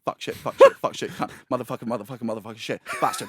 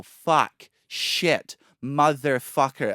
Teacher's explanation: When Americans swear, because they're musical, because they're happy, they elongate the vowels